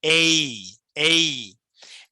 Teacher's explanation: For example প্রথম letter যেটা আমরা করি এই, তাহলে এইটা উচ্চারণ করতে আমরা প্রবলেম ফেস করি, তাহলে এটা কিভাবে করব, দেখেন এ প্লাস ই দুটো মিলে হয়েছে এই। এই, সো এ থেকে ই পর্যন্ত একটা গ্লাইডিং হবে